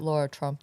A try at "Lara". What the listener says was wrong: Lara. It's Lara. It's not Laura. It's Lara. There's no ooh in there. No ooh, no umbutu.